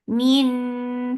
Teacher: keep the sound in your nose for a longer time